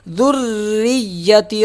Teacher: را تشدید ہے، سخت پڑھا جائے گا اور پتلا پڑھا جائے گا کیونکہ اس کے نیچے زیر ہے، اگر زبر ہوتا تو موٹا پڑھا جاتا ہے، یا پیش آ جائے یا زبر آ جائے تو موٹا پڑھا جاتا ہے۔